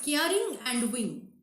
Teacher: a stressed syllable is rhyming with an unstressed one